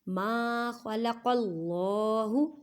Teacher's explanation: قاف کو موٹا ادا کریں اور قاف کو پڑھتے ہوئے خیال رکھیں کہ کاف کی آواز نہ آئے، کیونکہ یہ حروف مستعلیہ یعنی موٹے حروف میں سے ہے. · اللہ کے لفظ کو موٹا پڑھیں گے کیونکہ اللہ کے لفظ سے پہلے زبر یا پیش آ جائے تو اللہ کے لفظ کو موٹا کر کے پڑھتی ہیں